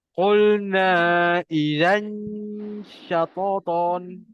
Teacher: Tanwin bertemu syah. Dengung sama. Lidah kita kena naik ke tengah.